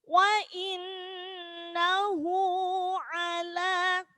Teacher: di situ ada gunnah, nun ditasydid maka dibaca mendengung